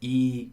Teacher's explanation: our tongue is high in the mouth it's further forward in the mouth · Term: high front vowel